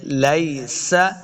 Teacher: سین پہ سیٹی کی آواز آئے گی